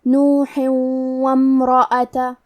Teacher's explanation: ہم یہ تنوین کو واو میں ملا کے غنہ اور تشدید کے ساتھ یہ حکم کو ادا کریں گے